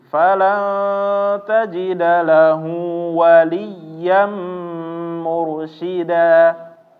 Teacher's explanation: Waliya, tapi wali ada namanya nanti kita bahas adalah naber. Jadi nada ini agak naik sedikit untuk menandakan bahwa dia adalah tasydid.